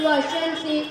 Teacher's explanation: হুরুফে শামসির কায়দা আলিফ লাম যদি হুরুফে শামসির শুরুতে আসে তবে লামকে পড়া যাবে না, বরং পরবর্তী অক্ষরের সঙ্গে যুক্ত করে পড়তে হবে